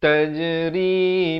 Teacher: Jim, huruf qalqalah, berikan lantunan.